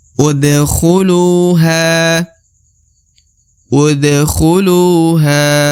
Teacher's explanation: Lu harus dipanjangkan dua harakat